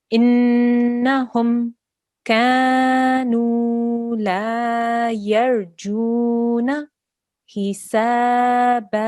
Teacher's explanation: here you needed to elongate for 2 seconds, but you kept it to 1. So just once more.